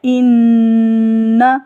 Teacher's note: ان شانئک، اس میں دیکھیں صرف شین کو لمبا کرنا ہے، شا، ان، نون کے اوپر غنہ ہوگا، ان نا کو لمبا نہیں کرنا، نون کو لمبا نہیں کر دینا، غنہ کو لمبا کرنا ہے، ان، ناک کے اندر جب آواز جائے گی تو اس کو تھوڑی دیر کے لیے ناک کے اندر رکھنا ہے، ان، الف کو لمبا نہیں کرنا، ان شانئک، شانئک۔